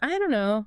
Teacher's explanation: Fluently, quickly, it morphs into, I don't know. The T at the end of don't often gets dropped, or it becomes a very soft sound, almost like a quick tap of the tongue